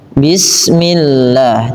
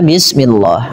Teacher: lafal Allah didahului dengan kasrah, maka dibaca dengan tipis bismillah, tidak dibaca bismillah.